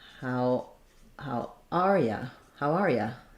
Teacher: Where you often gets reduced to ya if it's unstressed.